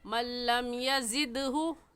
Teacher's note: دال حروف کلکلا میں سے ہے، کلکلا کریں گے